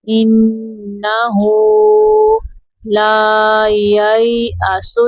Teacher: نون میں شدت پہ غنہ کریں گے ، انہو لا ییأسو، یا زبر یا، یا لین ہے، نرمی